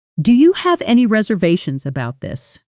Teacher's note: Say the question with rising pitch at the end.